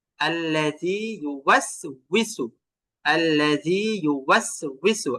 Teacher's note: এটা রস্যই না, এটা মূলত উইসু। এটা ওয়াও, ওয়াওটাকে মুখ গোল করে বলতে হয় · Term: ওয়াউজের উই